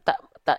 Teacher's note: Ta Ta ini dia enggak dibaca dengan vokal o kan tandanya huruf Ta ini adalah huruf yang tipis karena dia vokalnya vokal a